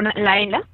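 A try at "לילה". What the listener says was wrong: Yes, but you put the stress on the first syllable.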